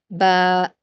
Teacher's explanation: दोनों होठों का गीला वाला हिस्सा मिलाने से बा अदा होती है